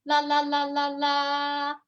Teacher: imagine that you're singing la la la la la. That's first tone.